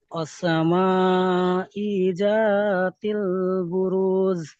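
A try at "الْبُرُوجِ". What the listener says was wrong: বুরুজ। এই লাস্টে জিমটা পরিষ্কার করতে হবে। বুরুজ নয়, বুরুজ।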